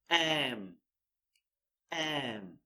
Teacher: Lips come together, breathe out through your nose here.